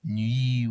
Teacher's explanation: This schwa, now all of a sudden being on that E minor chord, this chord here, you know, this open, nice, warm, dark ka, ma de nuit, and then all of a sudden it's like nuit, we're on E vowel, which is brighter